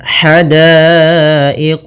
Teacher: ha kecil halus dari tengah tenggorokan kita · da ketemu alif 2 harakat, karena datang setelahnya huruf hamzah pada satu kata, maka menjadi 4 harakat dan kita namakan dengan mad wajib muttasil.